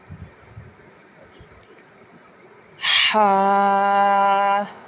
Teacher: حلق کے درمیان والے حصے سے ادا ہوگا جسے ہم بولتے ہیں وسطی حلق۔